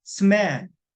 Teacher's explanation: M은 콧소리이기 때문에 SM을 스무로 소리를 내서 콧소리를 내서 발음을 해줘